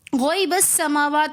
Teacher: इन्नी आलमू गौइबस समावात में बा को हम सीन के साथ मिलाकर पढ़ेंगे, दरमियान में हमज़तुल वसल आने की वजह से गिर जाएगा, इस हमज़ा को हम नहीं पढ़ेंगे।